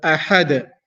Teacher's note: Hamza is pronounced from the bottom of the throat, Ha is pronounced from the middle of the throat, and then Dal, we're stopping there.